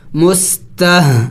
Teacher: ہ حروف حلقی میں سے ہے اور حلق کے آخری حصے سے ادا ہوگا